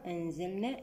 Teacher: النون مع الزاي إخفاء حقيقي بغنة مرققة المرتبة الوسطى